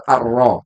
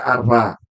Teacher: ro ini harusnya dibaca ketika dia fathah ataupun damah harusnya dibaca apa tebal tapi di sini dibaca tipis maka itu keliru · Yang harusnya ro-nya ini dibaca tebal ar-ro, tapi dibaca ar-ra.